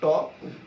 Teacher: জিভ কিন্তু তোমার মূর্ধাতে টাচ করে আছে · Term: মূর্ধন্য বর্ণ